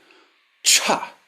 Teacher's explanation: The equivalent aspirated sound, cha. This should be much stronger than you think.